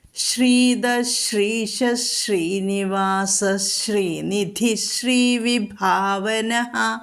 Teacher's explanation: വിസർഗസ്ഥാനത്ത് ഷ ഉച്ചരിച്ച് പോകുന്നു